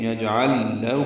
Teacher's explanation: ہو کو 2 حرکات لمبا کرنا ہے · عین کو لام سے ملانا تھا، آگے لام دوسرا آ گیا تو ادغام ہو گیا، ادغام مثلین